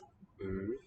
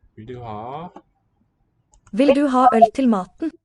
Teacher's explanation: Vil du ha øl is written with this modified O. Øl, so it's with the tongue forward and lips rounded. It's about mid-open.